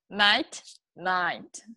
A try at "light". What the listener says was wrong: Nope, you said night. Light. Light, out of the sides of the mouth. So it's light. The sound is coming through the side of your tongue. Light, right?